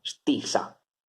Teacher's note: Fate attenzione, la T è sorda, quindi stissa, S, sorda, T, isa, due S, sono tutte due S sorde